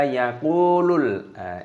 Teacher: Qafnya panjangkan, ada wawu sukunya mad tabi'i. Di sini ada lam alif, di sini perhatikan dibaca yaqulul.